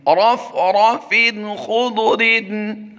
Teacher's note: याद रहे फ़ा दो ज़ेरफ़िन की तनवीन के बाद खा हुरूफ़े हल्की सी है, यहाँ पर इज़हार करेंगे, तनवीन में गुन्ना नहीं होगा